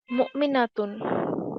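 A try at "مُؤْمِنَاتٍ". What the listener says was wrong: লম্বা, মুমিনাতিন, লম্বা করে বলেন।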